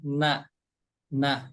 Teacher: emang ada huruf shad berharokat sukun harus dibaca tebal, tapi huruf nunnya jangan ikut tebal ya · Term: huruf nun ini tipis